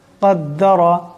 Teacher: এখানে কাফ, বড় কাফ, আওয়াজটি গলা থেকে আনতে হবে, আওয়াজটি মোটা করিয়া পড়তে হবে।